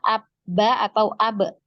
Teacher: Ada pertemuan diantara kedua bibir ya Jadi bisa ditarik kesimpulan bahwa makhroj dari huruf ba Ini adalah di bibir ya bibir bibir atas dan bibir bawah bertemu